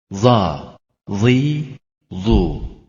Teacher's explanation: dilin ucunun çok az ilerisi ile üst ön dişlerin arkasından çıkarılır daima kalın okunur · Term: zı